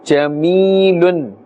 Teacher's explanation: Ya sakin has a kasrah before it, therefore this is now a ya madda. So we are going to pull a little bit up to the extent of one alif. Jamilun. We cannot say jamilun.